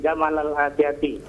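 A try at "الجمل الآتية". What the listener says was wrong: Bukan Jamal. Jumal.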